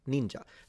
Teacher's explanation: But ninja is high to low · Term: falling pitch